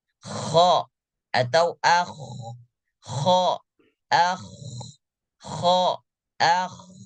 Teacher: ketika dia sukun atau berharakat dia tetap pita suara terbuka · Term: huruf ko